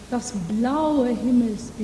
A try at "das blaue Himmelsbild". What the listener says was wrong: Yeah, I want to see want to hear the color. Yeah, you don't have to make it louder. Not das blaue Himmelsbild.